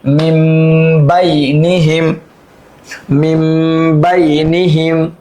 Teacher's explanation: নুন সাকিনকে মিম দিয়ে পরিবর্তন করে গুণনা করে পড়তে হবে